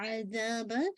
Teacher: عذا، عین کو نکالی گا. عذاب، ذا کو آپ نے 2 کاؤنٹ الف میں دیا